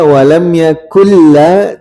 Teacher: lamnya walam yakulla tipis ya karena biasa ada yang baca tebal